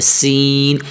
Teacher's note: سین کی آواز وہی سیٹی کی طرح ہلکی سی آواز نکالے